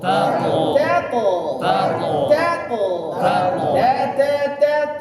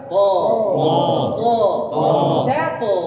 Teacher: ta tipis bunyinya di luar melebar te ta th tebal bunyinya di dalam